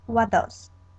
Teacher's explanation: the t is removed from what, and the d from does remains.